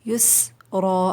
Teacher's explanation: یسرا آخر میں الف مدہ ہے، کھینچ کے وقف ہوگا 2 کاؤنٹس